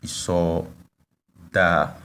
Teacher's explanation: the tones are on the first two vowels, up, and we have double vowels because there is lengthening. The pronunciation is long.